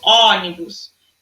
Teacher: lembre-se que o acento circunflexo ele é de forma mais fechada · é um som mais fechado